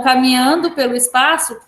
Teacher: a sílaba pá é a mais forte, portanto, é a sílaba tônica. E contando de caminhando até espaço, nós temos 7 sílabas.